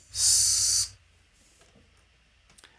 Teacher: Um these consonant sounds are aperiodic waves, so they are noise. S is a sibilant sound, a sustained noise